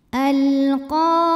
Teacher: Karena alif lam menghadapi huruf qamariyah yaitu qaf, maka lam sukun dibaca dengan jelas atau biasa disebut dengan izhar qamari. Al-qa matobi'i muqaddar karena ada baris fathah tegak di atas huruf qaf.